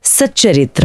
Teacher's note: जैसे सत प्लस चरित्र, यहाँ त के बाद च आया तो त ने उसकी नकल की और खुद आधा च बन गया, शब्द बना सच्चरित्र।